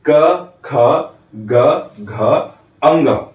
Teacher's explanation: हमारे अंदर से निकलती हुई वायु हमारे कंठ को स्पर्श करते हुए टच करते हुए बाहर जाती है। इसलिए इन सभी पांचों वर्णों का उच्चारण स्थान हो गया कंठ।